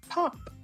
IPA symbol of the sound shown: p